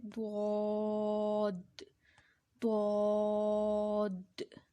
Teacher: द्वाद ज़ुबान की करवट और ऊपर की दाढ़ों की जड़ से अदा होता है। ज़ुबान की करवट यानी ज़ुबान साइडों से बाहर की तरफ जाती है और ऊपर की जो दाढ़ें होती हैं उनकी जड़ से लगती हुई बाहर की तरफ जाती है, तो फिर अदा होता है द्वाद। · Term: हरफ हाफिया